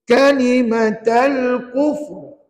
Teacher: Ra itu tebal. Ya, jangan dibaca nipis. Sebab ra itu di akhir kalimah diwakafkan, sebelumnya ada huruf berbaris di depan.